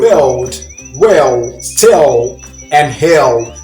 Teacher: in the cockney accent they replace the L's with a w